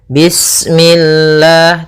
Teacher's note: lafal Allah ketika sebelumnya kasrah maka dia dibaca dengan tipis ya dengan L